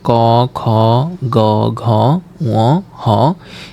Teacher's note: এগুলার উচ্চারণের স্থান হচ্ছে যে কন্ঠ ও জিহবা মূল থেকে।